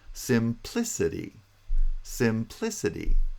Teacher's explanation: secondary stress is on the first syllable primary stress is on the second syllable not the third the second syllable simplicity simplicity the pitch is